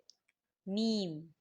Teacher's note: میم بند ہونٹوں کے خشک حصے سے میم ادا ہوتا ہے۔ کیسے؟ میم، آپ نے کیا کرنا ہے، آپ جب دونوں ہونٹوں کو آپس میں ملائیں گے تو آپ اس چیز کا خیال رکھنا ہے کہ آپ نے خشک حصے سے میم ادا کرنا ہے۔